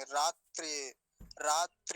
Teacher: त भी आधा है रेप भी आधा है तो दोनों को जल्दी ही बोलेंगे